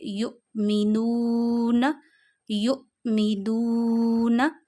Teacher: वाऊ मद्दा को one finger जितना खींचते हैं। यहां वन फिंगर जितना खींचिए यु मीनू यु मीनु तो यहां पे अब आपने वी को खींचना है। · واو مدہ کو 1 فنگر جتنا کھینچتے ہیں، یہاں 1 فنگر جتنا کھینچیے، یؤمنون، یؤمنون۔